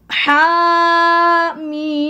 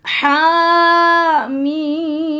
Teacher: Hurufnya ha dan mim. Lihat tanda panjangnya, haknya 2, mimnya 6.